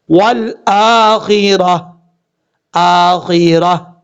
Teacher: یہاں پر جب وقف کریں گے تو تا کو ہا سے بدل دیں گے، کیونکہ اوپر زا ہے.